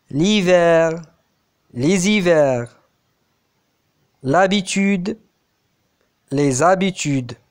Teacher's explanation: il y a élisions de l'article défini singulier ou liaison avec le mot suivant dans le cas de l'article défini pluriel